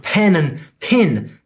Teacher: What's up with pen and pin? They both sound like pin to me.